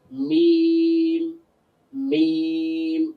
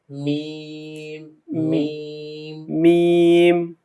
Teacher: মিমটা হচ্ছে একটু বাইরে ঠোঁটের শুকনো অংশ থেকে।